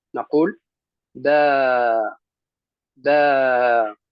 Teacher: إذن لا نرفع صوتنا في آخر المد